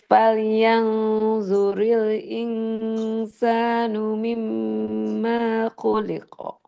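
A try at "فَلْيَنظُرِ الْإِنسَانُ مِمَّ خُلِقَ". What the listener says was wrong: Maknya enggak boleh panjang.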